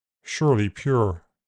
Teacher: In general American there is no separate phone for uh it is a near closed back vowel plus R. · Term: near close back vowel plus r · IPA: [ur]